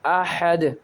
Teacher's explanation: اسے پڑھیں گے حمزہ زبر ا، ح زبر ح، اح، دال 2 پیش دن، احدن۔ دال کے اوپر سائن ہے 2 پیش کا، اسے وفق کی حالت میں ساکن کر دیں گے